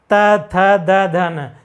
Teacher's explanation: इसी प्रकार त वर्ग वाले बोलेंगे, जब त वर्ग वाले बोलते हैं तो हमारी जो जीवा है आके दांत पे टच करती है